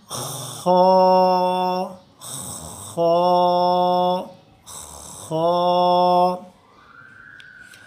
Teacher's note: जो हमारा थ्रॉट का जो पहला हिस्सा है अपर थ्रॉट जिसको बोलते हैं, वहाँ से खो खो की आवाज़ आती है और हम मुंह को खुला रखते हैं। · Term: मोटी आवाज़